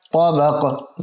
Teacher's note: दो ज़ेर को भी वक़फ़ में साकिन करेंगे और कलकला भी होगा साकिन होने की सूरत में क्योंकि हुरूफ़ कलकला में से है।